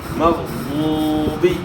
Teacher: واو ساکن سے پہلے پیش ہے تو پیش کو آپ کھینچیں گے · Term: واو مدہ